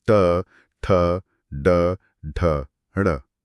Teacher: इसका उच्चारण स्थान मूर्धा है। वर्ण है ट, ठ, ड, ढ, ड़। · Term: ट वर्ग